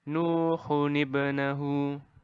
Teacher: di depannya akan ditambahkan huruf nun berbaris kasroh. Walaupun ia tidak ada pada tulisan. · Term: nun qutni